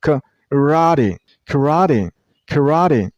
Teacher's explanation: The last syllable isn't pronounced T. It's D. D. T becomes a little bit D sound.